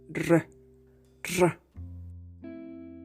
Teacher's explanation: What you commonly know as a rolled R is a voiced alveolar trill.